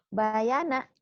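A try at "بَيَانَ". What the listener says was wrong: Pendek semua. Judes ya, kayak orang Judes. Nggak usah disentak sih.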